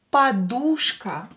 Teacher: So here U is stressed, O is not stressed, so pronounce it as A.